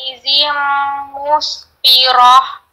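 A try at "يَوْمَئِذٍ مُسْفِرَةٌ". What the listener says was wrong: Tapi ini I. Jangan ditekan. I, biasa aja. Yauma idzin. Yauma idzin.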